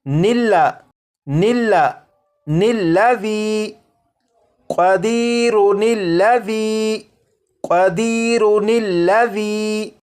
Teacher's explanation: یہ جو الف اور اس کے اوپر جو زبر ہے یعنی یہ جو حمزہ ہے اسے نہیں پڑھیں گے، بلکہ نون کو لام کے ساتھ ملا کر پڑھیں گے ، اور یہ پڑھا جائے گا نلا نلا نلذی قدیرن الذی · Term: نون قطنی